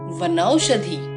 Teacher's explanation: ह्रस्व अ की संधि औ से होने पर औ स्वर का ही उच्चारण हुआ है। जैसा कि वन जमा औषधि वनौषधि की संधि में हो रहा है।